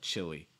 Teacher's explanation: if you'd like to you can do a light l sound for this too